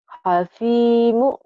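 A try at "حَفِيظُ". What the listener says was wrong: bukan hakimu ini mah. Hafidhu. Kedengarannya hakimu, bukan hafidhu. Hafidhu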